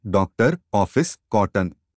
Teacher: ओ, यह अर्धविवृत दीर्घ पश्च स्वर है। यह अंग्रेजी से आगत वर्ण है।